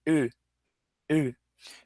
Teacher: ele tem um som que não tem em português, que é um E arredondado. Tá, então uma letra E de elefante, só que com um biquinho arredondado.